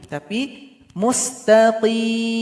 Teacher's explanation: Jadi keluar dari pangkal lidah, suara naik ke langit-langit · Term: huruf qof